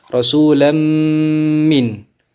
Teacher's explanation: Apabila ada nun sukun atau tanwin bertemu dengan salah satu huruf itu maka hukumnya menjadi idgham bi gunnah. Cara membacanya fathatain dimasukkan ke dalam huruf mim dengan cara didengungkan atau ditahan.